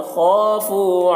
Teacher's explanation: خا کو پر پڑھنا ہے، خا میں قلقلہ نہیں کرنا ہے۔